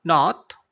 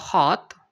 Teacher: Dia seperti A tapi seperti membulat atau seperti ke huruf O ya. Kalau tadi A, dia ini O, ya, O. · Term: suara O